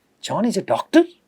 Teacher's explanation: the intonation is rising at doctor. This rise in intonation is converting this declarative sentence, a simple looking sentence, into a question, that I am questioning the fact that John is a doctor.